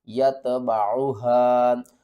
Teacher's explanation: چھوٹی مد ہے، مد منفصل ہے، اس کو تین الف کے برابر کھینچ کر پڑھیں گے